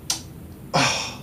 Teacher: Add at the beginning an alveolar click with unreleased velar coarticulation.